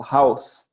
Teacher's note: house then the owl in there is is considered a is considered as one vowel but a vowel that changes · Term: diphthongs